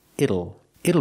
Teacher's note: the T changes to a fast D